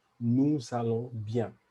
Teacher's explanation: When nous is alone, I'll just say nous without the S. But in a sentence and with a verb starting with a vowel, I would just say nous allons. So I'm making a connection.